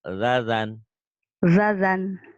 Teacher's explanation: Ujung lidah ke ujung gigi ya sa. Dari sa tarik ke dalam sedikit jadi zal.